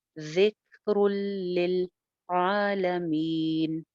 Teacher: ہے، بغیر غنہ کے ادغام ہے، ذکر للعالمین، یہاں پہ بھی لاسٹ میں مد عارض لگا کے اور اس کو 2 سے 3 الف آپ لمبا کھینچ سکتے ہیں